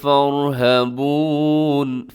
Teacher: فَارْہَبُونَ اس میں را اپنے موٹا پڑھنا ہے، باقی سب کے سب باریک ہیں